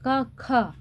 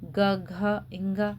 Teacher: पहले क ख अघोष होते हैं। बाद के ग घ ये सघोष होते हैं